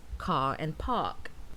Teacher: many varieties of British English are non-rhotic, so the R sound is not pronounced in certain contexts